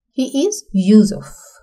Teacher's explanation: for definiteness or assured confidence, we can see it's falling